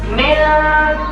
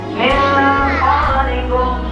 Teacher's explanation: Samar dibarengi dengung selama satu alif dua harokot. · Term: samar dan dengung